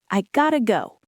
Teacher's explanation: I have got to go becomes I gotta go. The two T sounds merge into a soft, fast D sound